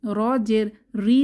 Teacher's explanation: র তে যখন জের ধরে আমরা পড়বো তখন র পাতলা হবে র জের ঋ বলবো না ঋ র ঋ রু র ঋ